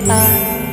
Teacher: আলিফের মাখরাজ হলকের শুরু হতে